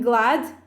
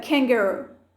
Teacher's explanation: the back of our tongue touches the soft palate which is the velum at the back of the mouth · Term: velar consonants